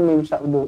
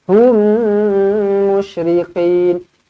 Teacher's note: Mim kosong bertemu mim sabdu. Idgham mislain. Rapatkan bibir. Dengungkan dua harukat.